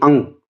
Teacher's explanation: जैसे आप अंग बोलते हो ना तो नाक और मुंह दोनों से आवाज निकलती है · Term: अनुनासिक